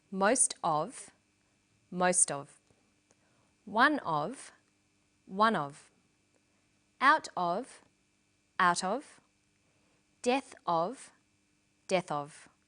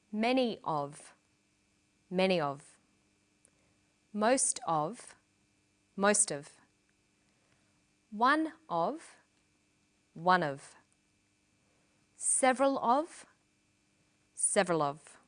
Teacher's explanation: Notice that of in these phrases is unstressed.